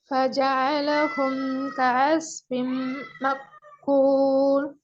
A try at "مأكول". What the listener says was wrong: மக்குள் தான் வருது. இன்னும் அந்த கெப் கெப் வேணும். நல்லா கெப் எடுங்க. கூல் மக்கண்டு வரக்கூடாது. மக்கண்டு வரக்கூடாது. கூல்.